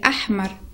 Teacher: le point ha, ça sort dans le milieu de la gorge. C'est pas comme le ha.